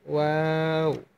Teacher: দুই ঠোঁট গোল করে ওয়া হরফটি উচ্চারণ করবেন,